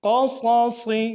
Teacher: قاف اور دونوں صاد موٹا کریں گے